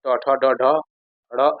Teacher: ट वर्ग दोस्तों मूर्धा से बोला जाता है